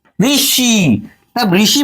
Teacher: ऋषि बोलेंगे तो आपकी जिभ्या मूर्धा को स्पर्श करती है